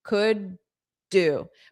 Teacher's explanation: So you have to have that flap D